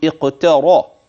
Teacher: الراء التي في قوله اقترا، إنها مفخمة لأنها مفتوحة، إذ أنها وقعت في وسط الكلمة